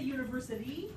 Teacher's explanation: a voiced alveolar flap that's an allophone and often occurs between vowels